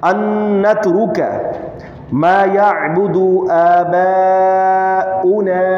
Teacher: ان نون مشدد غنہ ہوگا. ان نترک ما یعبد آباؤنا، با کا جو ہے 3 الف کے برابر کھینچا جائے گا.